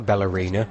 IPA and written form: b,ælɚ'inə (Ballerina)